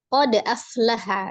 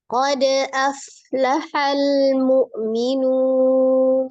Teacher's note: di sini ada dal sukun, hukumnya qalqalah, dipantulkan. Qalqalahnya termasuk qalqalah sughra karena dia di wasal atau di tengah ya. Jadi langsung tidak berjedah.